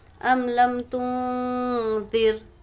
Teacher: نون ساکن کے پاس ذا اخفا میں سے ذال ہے، تو نون کی آواز کو ہم کو ناک میں چھپانا ہے. ام لم تنذر، حامیم پیش ہم، ام لم تنذرہم، یہاں پر را کو باریک پڑھیں گے، را ساکنہ سے پہلے زیر ہے.